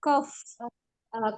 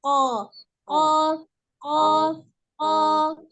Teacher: makhrijul huruf qaf adalah pangkal lidah bertemu dengan langit-langit atas. Pangkal lidah ini adalah lidah bagian belakang, ya.